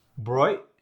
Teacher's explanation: When you get words ending in GHT, like right and bright, get rid of the T.